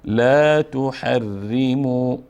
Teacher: اینجا ر مرقق خوانده میشه چون مکسور هست